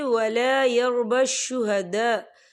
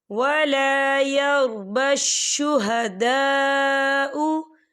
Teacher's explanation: खाली अलिफ से पहले ज़बर है और इस पर मद भी है, तो हम इसे 4 हरकत के बराबर खींच के पढ़ेंगे।